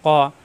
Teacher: জিব্বার গোড়া থেকে কা হবে না ক